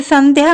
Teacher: संध्या में प्रयुक्त होने वाला अनुस्वार न और उसके बाद आने वाला ध वर्ण दोनों त वर्ग से हैं, इसीलिए यहाँ पंचमाक्षर न का प्रयोग अनुस्वार के रूप में हुआ है।